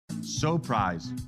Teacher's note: Raising that pitch a little bit higher on so, they're making their product sound even more prized.